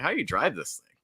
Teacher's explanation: I would put a lot of stress on drive if I were saying it.